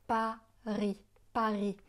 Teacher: Le S de Paris est muet.